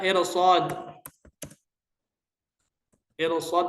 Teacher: Ra sukun sebelumnya kasrah. Harus sesuai kaidah ra dibaca tarqiq. Tapi di sini dibaca tafkhim.